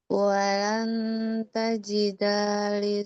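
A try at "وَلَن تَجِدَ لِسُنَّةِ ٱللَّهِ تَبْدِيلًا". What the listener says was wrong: Dalnya nggak panjang, dalnya nggak panjang. Wala tajidali, jangan tajidali sun, nggak panjang dalnya.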